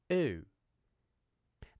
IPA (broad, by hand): uː